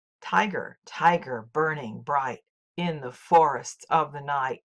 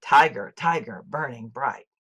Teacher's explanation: in every line Blake chooses not to complete the trochaic foot but ends the line with a strong accent